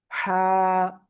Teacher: গলাটা চেপে এক আলিফ টানিয়ে আমরা উচ্চারণ করব,